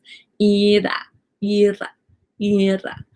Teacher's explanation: So my tongue just touches the roof of my mouth one or two times. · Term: the flap R